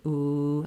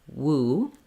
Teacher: the second part of the glide here i lose the rounding and then when i'm going back to another u sound i have to re-round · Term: w sound